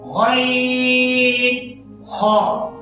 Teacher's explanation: غین، خا ادا ہوتے ہیں گلے کے اوپر والے حصے سے، ادنا حلق سے، یعنی گلے کے اوپر والے حصے سے جو منہ کی جانب ہے.